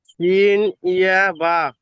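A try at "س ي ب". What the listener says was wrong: বাহ মাশাল্লাহ।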